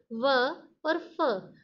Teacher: व और फ बोलते समय हम दोनों होंठों को स्पर्श नहीं कर रहे, निचले होंठ और ऊपरी दांतों का स्पर्श करके ये व्यंजन बोल रहे हैं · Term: दंतोष्ठ्य